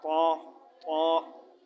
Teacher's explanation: بہت زیادہ تا بھی نہیں پڑھنا اور تھا کی آواز بیچ میں نہ آئے